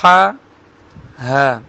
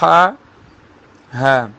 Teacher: ہا گلے کے درمیان سے، ہا گلے کے نیچے والے حصے سے، ہا، ہا۔ ان 2 حروف کو بہت سے لوگ مکس کر دیتے ہیں، جیسے الحمد کو الحمد، ہا بنا دیتے ہیں، ہا کو بھی، تو اس چیز کا خیال رکھنا ہے، ہا، ہا۔